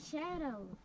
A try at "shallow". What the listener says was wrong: You said shadow or shallow? Sound like you said shadow.